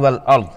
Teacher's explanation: را ساکنہ پر پڑی جائے گی کیونکہ اس سے پہلے والے حرف پر زبر ہے۔